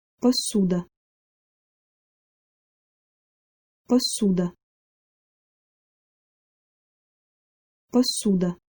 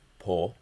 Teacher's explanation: Also make sure to note that the first vowel, o, is reduced. Instead of po, it would be p in this case, pasuda.